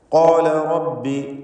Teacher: വനഹ്ശുറുഹു യൗമൽ ഖിയാമത്തി അഅ്മ. ഖാല റബ്ബി, ഖാല എന്നതിലെ ഖാഫിന് തഫ്ഖീം കൊടുക്കുക, തടിപ്പിക്കുക. അതിൻ്റെ ദീർഘാക്ഷരമായ അലിഫിനും തഫ്ഖീം, ഇസ്തിഅലാഇൻ്റെ ഹർഫിനെ ദീർഘിപ്പിക്കുമ്പോൾ അലിഫിനും തഫ്ഖീം.